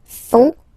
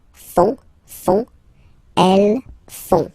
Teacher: And ils, plural, font, final T not pronounced